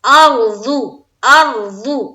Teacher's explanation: اور ضاد پیش ضو، یہاں بھی ضاد بھی موٹے حرفوں میں سے ہے، تو یہاں بھی منہ بھر کر ہم پڑھیں گے